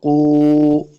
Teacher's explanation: واو ساکن ہے، دونوں ہونٹ گول کریں گے تب واو کا مخرج صحیح ادا ہوگا۔ واو مدہ بھی ہے، دو حرکات لمبا کریں گے، آخر پہ میم کو ساکن کرنا ہے وقف کرنے کی صورت میں۔